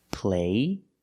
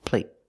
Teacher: The stop T makes the vowel shorter.